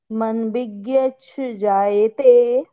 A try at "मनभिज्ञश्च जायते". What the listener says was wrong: मनभिज्ञ के बाद में जो श है ना, वो तो उच्चारण में आ रहा, च नहीं आ रहा है। हाँ, स्पष्ट होना चाहिए।